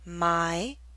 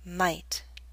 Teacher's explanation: The Y in my is longer because it's an open sound.